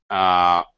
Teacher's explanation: it is pronounced with the tongue absolutely in the neutral position not too far forward not too far back not too high not too low it's extremely relaxed and work as a sound basically it's just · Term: schwa sound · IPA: /ə/